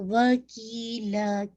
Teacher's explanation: کی اور لا دونوں کو آپ نے 2 کاؤنٹ پڑھنا ہے